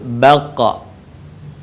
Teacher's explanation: dalam posisi mati maka terdengar suaranya memantul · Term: huruf q